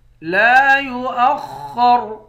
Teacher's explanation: لام کے بعد الف ہے، الف حروف مدہ ہے، 1 الف کے مقدار کھینچیں گے۔ خا اور را دونوں کو موٹا پڑھیں گے، آخر میں را ساکن ہے، را کو موٹا پڑھیں گے۔